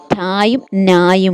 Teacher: ഈ ട ന എന്ന് പറയുമ്പോൾ നമ്മൾ പല്ലിന്റെ മുൻവരിയിലെ പല്ലിന്റെ പിന്നിലായിട്ടാണ് നമ്മുടെ നാക്ക് വരുന്നത് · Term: വർഷം